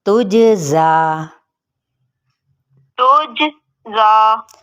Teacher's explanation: جیم پہ کلکلا کرنا ہے، ہلانا ہے اس کو